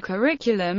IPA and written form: kəˈrɪkjʉləm (curriculum)